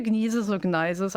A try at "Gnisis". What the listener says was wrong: It's just Gnisis. You don't pronounce the first consonant.